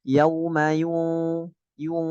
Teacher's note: caranya yu mencucu ketika ketemu nunnya jangan mencucu lagi. Bukan yu fahu itu nunnya jadi tebel padahal nunnya harusnya tipis.